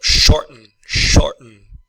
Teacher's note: The T is a pause in the throat.